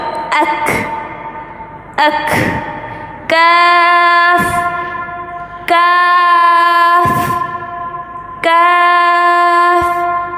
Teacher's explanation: یہاں پہ کلکلا نہیں کریں گے ہم، لفظ کو ہلائیں گے نہیں، سٹاپ کرنا ہے